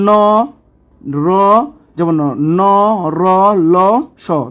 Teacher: দন্তমূলীয় ব্যঞ্জন যেগুলো আছে যেসব ধ্বনি অর্থাৎ ব্যঞ্জন ধ্বনিগুলো উচ্চারণের সময়ে জীবের ডগা উপরের দাঁতের পাটির গোড়ার সঙ্গে লেগে যায় এবং বায়ুপদে বাধা সৃষ্টি করে